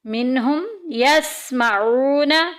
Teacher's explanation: واو ساکن پیچھے پیش، واو مدہ کا قاعدہ جاری ہو رہا ہے، ایک الف کے برابر لمبا کریں گے